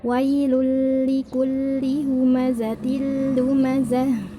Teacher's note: Masuk tanpa dengung, jadi langsung masuk ke huruf yang dituju, baik itu lam atau ro. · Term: idgham bila gunnah